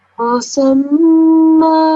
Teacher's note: 2 seconds for this shadda, mim mushadda, 2 seconds for the nasal sound. Then after that, 2 seconds because there's a alif attached to it.